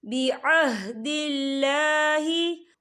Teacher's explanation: اللہ کا نام باریک پڑھا جائے گا کیونکہ اللہ کے نام سے پہلے زیر ہے۔